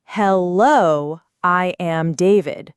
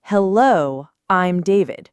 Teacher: It's not I am squished together. It's a smooth I'm sound almost like I with an M humming at the end.